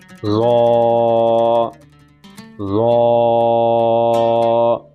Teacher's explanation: اس کا جو مخرج ہے زبان کا سرہ اور اوپر کے دانتوں کے اندرونی کناروں سے یہ حرف ادا ہوگا، ظا، ظا۔ ہم اس کو بھی پر کر کے موٹا کر کے پڑھیں گے، یہ سارے حروف مستعلیہ پر اور موٹے کر کے ہی پڑھے جائیں گے۔